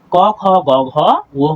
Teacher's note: যেসব ব্যঞ্জন ধ্বনি উচ্চারণের সময় জিভের পেছনের অংশ উঁচু হয়ে আলজিভের কাছাকাছি নরম তালুর কাছে এসে বায়ুপথে বাধা সৃষ্টি করবে সেগুলো হচ্ছে আমাদের কণ্ঠ ব্যঞ্জন। অর্থাৎ জিভের যে পেছনের অংশ রয়েছে সেগুলো হচ্ছে আলোজিহ্বার পেছনে এসে বাধাপ্রাপ্ত হবে।